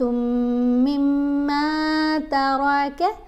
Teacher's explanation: میم کو میم سے ملاتے ہوئے بھی غنہ کرنا ہے